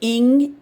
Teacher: ng blends itself into one sort of phone, one sound.